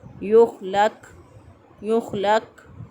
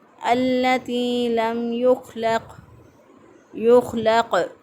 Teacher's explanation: خا جو ہے یہاں پر قلقلہ نہیں ہونا چاہیے، یہاں پہ خا کو سادہ ادا کریں گے اور موٹا ادا کریں گے التی لم یخلق۔ قاف جو ہے یہ سکون کی حالت میں ہے اور یہاں پر قلقلہ ہوگا